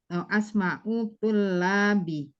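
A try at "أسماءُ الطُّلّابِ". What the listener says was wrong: Asma'ut tullabi. Pokoknya ditasdidkan. Nah, asma'ut tullabi.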